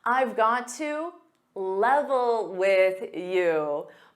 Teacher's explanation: Just like going to becomes gonna, got to becomes gotta in spoken English.